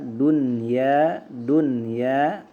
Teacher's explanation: Nah, ini idhar wajib maksudnya ya dia harus dibaca jelas walaupun ya nun sukun itu bertemu dengan salah satu huruf idgham ya